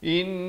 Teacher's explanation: dengungkan 2 harakat, wajibul gunnah di sini, hu dipanjangkan 2 harakat